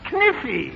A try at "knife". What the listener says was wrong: No, the word is knife. K is the silent letter. K is always silent in front of N.